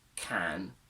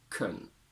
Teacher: a strong form can and a weak form kun, where a becomes a simple schwa